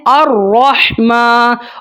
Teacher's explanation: تو یہاں پر بھی آپ نے الرحمن، را کو موٹا پڑھنا ہے، ہا کی ساؤنڈ کو آپ نے کلیئر کرنا ہے، میم کو ایک الف تک لمبا کرنا ہے